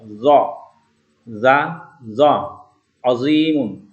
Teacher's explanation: Ini zal tipis, kalau ini zo mulut kita menjadi bulat pengucapannya. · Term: huruf zo